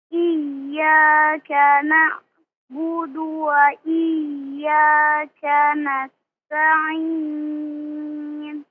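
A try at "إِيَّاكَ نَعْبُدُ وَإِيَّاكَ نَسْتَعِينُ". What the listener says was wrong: Afwan, huruf ainnya jangan dimatikan ketika sukun ya.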